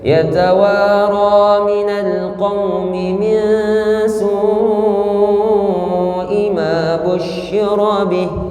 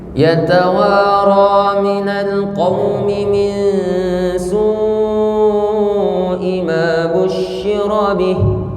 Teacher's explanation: Ada panjang bertemu hamzah namanya mat wajib muttasil kalau dalam satu kalimat.